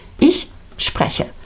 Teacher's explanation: la vocal principal está en medio, spreche, pero es cortita.